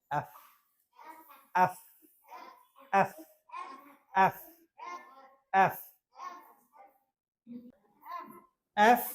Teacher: নিচের ঠোট উপরে দাঁতের সাথে টাচ করবে